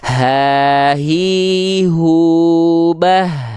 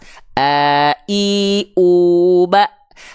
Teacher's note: kalau pita suaranya menutup itu ee itu jadinya huruf hamzah Jadi Hamzah dan H besar sama-sama dilafalkan dari pangkal tenggorokan bedanya kalau Hamzah itu pita suaranya menutup sehingga yang keluar hanya